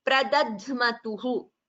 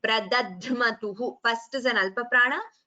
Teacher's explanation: the Alpaprana, followed by the Mahaprana. So that should be very clearly differentiated.